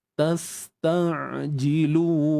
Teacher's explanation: Untuk ain kena sempitkan ya. Bahagian tengah kerongkong ni kena sempitkan. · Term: bunyi ain